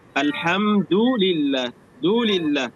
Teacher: يعني لا نولد من الضمة واو صغيرة